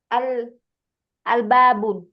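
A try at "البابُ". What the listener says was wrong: Jangan ditanwin.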